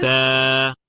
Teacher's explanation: এই সায়ে গিয়ে আমাদের একটা কনফিউশন হয়, আমাদের অনেকের এটা সা হয়ে যায়, সা। সা হবে না, কারণ কি এটার সময় আমাদের জিহ্বাটা বের হবে।